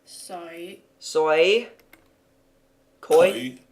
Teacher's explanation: Eoi, a soft sound that doesn't occur in English. The closest would be the oi sound in boy, but the emphasis is more on a u sound than an o.